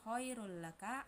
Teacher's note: mat lain karena ya sukun didahului fathah, cara bacanya dipanjangkan dua harokat